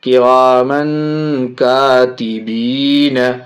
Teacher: یہ میم کے اوپر تنوین، تنوین کے بعد یہ دیکھیے چھوٹی کاف حرف اخفا میں سے، اس لیے ناک میں آواز چھپائیں گے